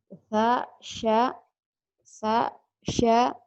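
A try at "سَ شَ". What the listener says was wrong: Sama aja Harusnya kan sa, sya gitu. Sa, sya, sa, sya.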